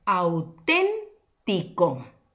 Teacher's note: la mayor fuerza de voz en la ante penúltima sílaba esa es mi sílaba tónica